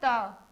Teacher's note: आपके दांतों से। दांतों, आपकी जीभ जो होती है वो दांत को टच करती है तो इन वर्णों का उच्चारण उसकी सहायता से हो पाता है